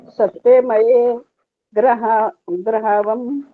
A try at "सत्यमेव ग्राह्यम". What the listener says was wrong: सत्यमेव ग्राह्यम, सत्यमेव का तो पहले करो। एव क्या हुआ?